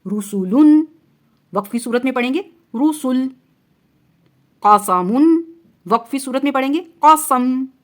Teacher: آخری حرکت ساکن ہو جائے گی یعنی جزم بن جائے گی